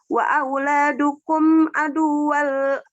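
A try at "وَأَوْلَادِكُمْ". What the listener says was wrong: Tadi wa aula apa tadi? Wa auladikum bukan wa auladukum, wa auladikum.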